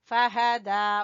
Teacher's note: फा को छोटा, हा को छोटा और दाल को खींचेंगे खड़ी जबर की वजह से